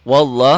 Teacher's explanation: lafaz Allahnya dibaca tebal. Kenapa dibaca tebal? Karena sebelum lafaz Allah barisnya di atas.